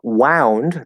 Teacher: it uses the diphthong ow which is like if you get hurt right that's the sound we make